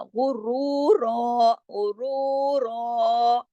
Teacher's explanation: غرورا یعنی غین سے لے کے را تک سارا کچھ موٹا بھی پڑھنا ہے اور غین کو صرف 1 حرکت پڑھنا ہے.